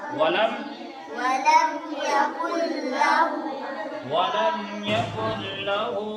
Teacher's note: وَلَمْ يَكُنْ لَهُ میں اس نون کو نہیں پڑھ کے ڈائریکٹ اس کاف سے لام کو ملا دیں گے